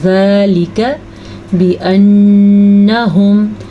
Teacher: پھر سے نون کے اوپر شاد آ گئی ہے تو نون کا غنہ ضرور ادا کرنا ہے